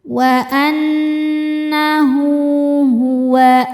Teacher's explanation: Wa annahu hu hukumnya mad silah qasirah karena ada ha damir diapit dua huruf hidup dan setelahnya bukan hamzah bukan a i atau u maka h-nya dipanjangkan dua harakat